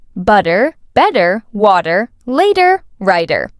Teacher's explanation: One key feature of American pronunciation is the use of the flap T. For example, in words like butter, better, and water, the T sounds more like a soft D.